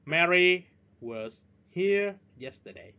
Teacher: Ở đây chúng ta nhấn chữ Mary và chữ here và chữ yesterday, còn chữ was chúng ta nhẹ nhàng thôi. Nó là weak beat, 3 từ còn lại là strong beat.